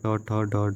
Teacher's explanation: जब जीभ की उल्टी हुई नोक का निचला भाग मूर्धा को स्पर्श करता है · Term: मूर्धन्य व्यंजन